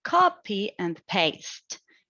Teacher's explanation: It is stressed on the first syllable and then the last syllable to maintain a balance. And this balance is where it sounds English.